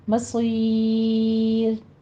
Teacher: وَإِلَيْكَ الْمَصِيرُ میں لئی میں یا مدہ ہے اور لام کے اوپر جھٹکا نہیں دینا۔ مصیر میں صاد کو پر پڑھتے ہوئے آگے یا مدہ کے بعد ہم وقف کر رہے ہیں تو آپ نے را باریک پڑھنی ہے، مصیر۔ یہاں پہ مدارس وقفی ہوگی، 6 کاؤنٹ کرنا ہے۔